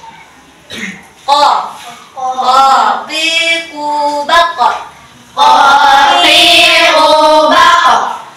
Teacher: pangkal lidah menempel dengan benda yang menggantung di langit-langit